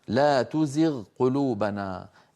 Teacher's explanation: التقى الغين وهي من أدنى الحلق مع القاف، وهي من أقصى اللسان، لأن منطقة أدنى الحلق مجاورة لأقصى اللسان.